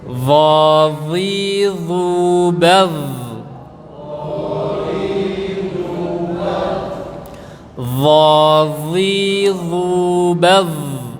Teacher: Letak makhrajnya atau tempat keluarnya ujung lidah ditempelkan ke gigi seri bagian atas, ujung gigi seri bagian atas ya. Sehingga kalau dilihat di gambar itu posisi lidah terlihat dari luar, artinya keluar sedikit.